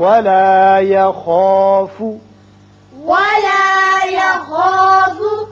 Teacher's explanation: خا چونکہ پر پڑا جاتا ہے حروف مستعلیہ میں سے ہے، اس کی وجہ سے الف بھی پر ہوگا.